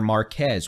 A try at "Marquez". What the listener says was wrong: That is pronounced Marquez, by the way. Forget that Z exists. So Marquez.